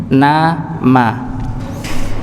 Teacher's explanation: Jadi kalau baca Nun atau mim maka dia keluar dari rongga hidung